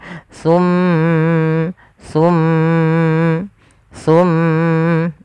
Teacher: ketika melafalkan mim sambil ditahan suara mimnya masukkan ke rongga hidung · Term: ditahan dua harakat